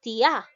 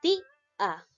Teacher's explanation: no es tia, sino es ti-a. Suena más la I. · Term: hiato acentual